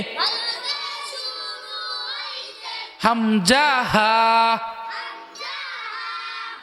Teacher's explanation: এক নম্বর মাখরাজ হলকের শুরু হইতে হামজা হা